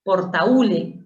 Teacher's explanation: Portaúle, que no te confunde la H, tienes una vocal abierta A y cerrada U, y el acento está en la U, ese es hiato acentual, se tilda obligatoriamente.